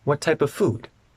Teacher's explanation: the f in of and the f in food connect what type of food it sounds like what type of food